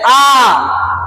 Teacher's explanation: ऐसा एक ही वर्ण स्वर है जिसमें आपका मुंह पूरा खुल जाएगा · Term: विवृत स्वर